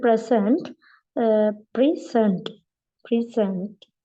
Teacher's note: this is the verb present so the stress is on the second uh syllable